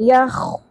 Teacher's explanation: پر حرف ہے اور کھردرا پن بھی ہے خراش کے ساتھ